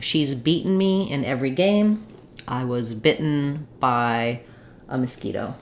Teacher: And for bitten, same thing. We're gonna have the I vowel, an unreleased T, and an N sound.